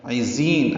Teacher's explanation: عزین عین وسط حلق سے ادا کریں گے، ذات صفیر کی آواز سے ادا کریں گے اور لمبا کر دیں گے.